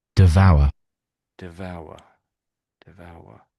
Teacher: So there's a V sound, v, but this hour, you could, I can sort of hear a W sound in there. So devour, so v, and then a w sound.